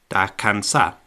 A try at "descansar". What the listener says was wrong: Yeah, descansar. There's an S there.